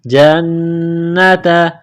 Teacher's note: न मुसद है ना करेंगे आवाज नाक में छु पाएंगे